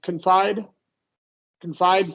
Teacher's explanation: stress on the second syllable